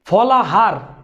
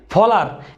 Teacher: এই পদের মধ্যে এই হটা বিলুপ্ত হয়ে হটা নিঃশেষ হয়ে ফলার হয়েছে, এটাকে আমরা বলি কি অন্তর্হতি।